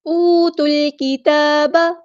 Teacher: اوت الکتاب، واو مد آئی ہے تو مد اصلی کریں گے، واو ساکن ہے اس سے پہلے پیش ہے، اسے ہم کہتے ہیں واو مدہ